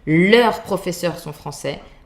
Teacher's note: The final S is mute.